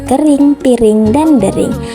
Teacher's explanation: Yang kedua ada vokal I dengan proses pembentukan tinggi bawah, tak bundar, depan